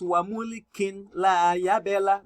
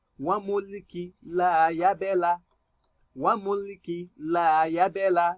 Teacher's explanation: You must drop one of the kasra, which is your tanween, and read with one because of the rule of idgham bighairi gunna. Now you read it as wa mulki la yabela, wa mulki la yabela.